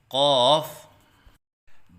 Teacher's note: غلطیوں کی نشاندہی: بعض بچے قاف کی ادائیگی کے وقت منہ بند رکھتے ہیں، یہ غلط ہے، جیسے قاف، کیونکہ الف کی ادائیگی منہ کے کھولنے سے ہوتی ہے، جیسے قاف۔ بعض بچے قاف کے الف کی ادائیگی کے وقت آواز میں لہراؤ سا پیدا کرتے ہیں، یہ غلط ہے